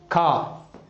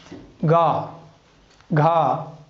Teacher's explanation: खा कंठ से, गा घा ढा, तो सब कहाँ से बोला जा रहा है? कंठ से बोला जा रहा है।